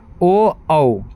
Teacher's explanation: कुछ ऐसे वर्ण हैं जो कि कंठ और ओष्ठ, होठ और कंठ दोनों के हेल्प से निकलते हैं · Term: कंठोस्थीय